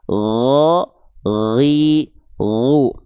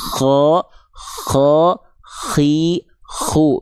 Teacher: Karena makhraj mereka sama, cuman beda dari segi nafas. Kalau huruf ko, dia ada nafasnya.